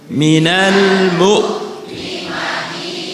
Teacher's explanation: huruf hamzah jelas, yaitu harus tampak syiddahnya, tampak jaharnya, dan tarkiknya karena dia mempunyai sifat istifal dan seterusnya.